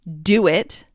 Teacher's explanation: It's important because if you have a phrase like do it, you have a back vowel and a front vowel back to back. And so it's much easier to make these two sounds if you bridge them or link them with a glide sound like w.